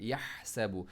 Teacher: ہا کو تھروٹ کے ساتھ، تھروٹ مڈل تھروٹ سے اور اسٹریچ کے ساتھ